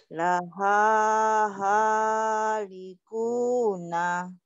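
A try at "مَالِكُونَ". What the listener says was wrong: Kok halikuna? Ini kan mim. Laha malikuna.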